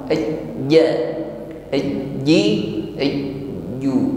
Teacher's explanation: huruf jim ini tidak boleh diucapkan dengan hamas atau banyak angin yang keluar ketika mengucapkannya. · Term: jahar